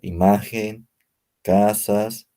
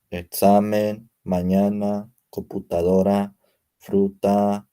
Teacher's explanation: el acento prosódico en la penúltima sílaba en las palabras graves la sílaba tónica es decir la que pronunciamos con mayor fuerza se encuentra inmediatamente antes de la última sílaba